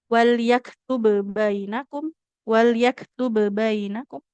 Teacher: Maka sifat qalqalahnya bukan hilang ya, tapi melebur ke huruf yang setelahnya. Maka di sini tidak ada keharusan kita untuk memantulkan huruf bnya ya. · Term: idgham kamil